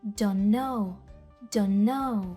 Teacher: у слові Don't буква Т зазвичай не вимовляється тобто Don't завершується на звук N і No починається на звук N